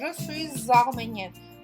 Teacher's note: նախորդ բառի վերջին բաղաձայնը միանում է հաջորդ բառի ձայնավորին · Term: liaison